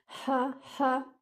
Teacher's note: Your ha should be sharp from the middle part of your throat.